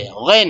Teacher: غین اور خا کا جو مخرج ہے آخر حلق، وہ وہاں سے جو ہے غین نکلتا ہے